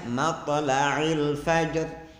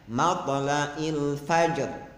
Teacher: Kemudian kalimat matla'il fajr yang mestinya ain, dia ganti menjadi hamzah. Mestinya matla'il fajr, dia bacanya matla'il fajr.